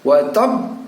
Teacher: bunyi pantulan yang keluar daripada huruf ba yang bertasdid yang dalam posisi dimatikan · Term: qalqalah